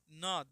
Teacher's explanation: न दांत से और नाक से